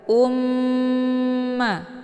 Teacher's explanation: dimasukkan ke dalam huruf mim dengan cara ditekan kemudian ditahan lebih kurang dua kali ketukan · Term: gunnah musyaddadah